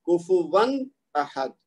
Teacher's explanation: آخر میں کیا ہو رہا ہے تنوین, واو کے اوپر 2 زبر ہیں تو یہ تنوین ہے, اور دوسرا لفظ جو ہے وہ حمزہ سے شروع ہو رہا ہے. تو پھر وہی صورتحال ہوگی کہ اس کو ہم ظاہر کر کے پڑھیں گے